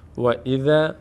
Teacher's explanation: فتحه بعدش الف صدای آ می‌گیره پر خوانده نمیشه